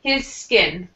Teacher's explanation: you can connect those two words because his ends with an S and skin begins with an S.